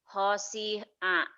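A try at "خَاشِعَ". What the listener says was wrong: nggak ada yang panjang shinnya gede khosyi'a khosyi'a khosyi'a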